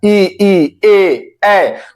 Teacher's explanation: अब ध्यान दीजिएगा, जैसे मैं अग्र स्वर का जब उच्चारण करता हूं, यानी ई है ना, ई ए, तो आप देख रहे होंगे जीभ के आगे वाले हिस्से पर बल पड़ रहा है